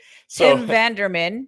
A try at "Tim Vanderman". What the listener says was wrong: There's no R in there. Tim Vanderman.